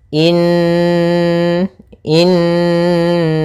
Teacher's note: sambil suara nunnya dimasukkan ke rongga hidung kita karena dia gunah